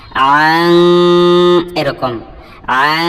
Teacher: তো আসলে নুন সাকিনের পরে যদি ইখফার কোনো অক্ষর আসে তো সাদ এটা হলো ইখফার অক্ষর, তখন এই নুন সাকিনটা আসলে নাকের ভিতরে গিয়ে উচ্চারণ হয়, সরাসরি নুন উচ্চারণ হয় না। আং এরকম আং, আশা করি বুঝতেই পেরেছেন।